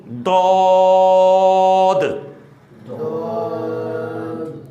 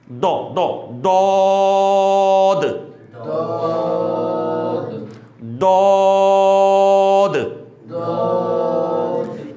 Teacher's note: دال آخر پہ دال آ رہا ہے, دال ساکن ہے, اس وجہ سے واضح طور پہ دال کے اوپر خوب جماؤ کے ساتھ قلقلہ بھی کریں گے۔ اس بات کو آپ نے سمجھنا ہے کہ واؤ بیچ میں بالکل بھی آمیزش نہیں کرنی واؤ کی، یعنی دو دو دو یعنی دود، اور منہ کھولنا نہیں، یعنی دود ایسے نہیں، دو دو دود دود۔